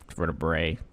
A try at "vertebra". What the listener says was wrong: Vertebro. You said vertebra or bray. I say bruh. Vertebra, bruh.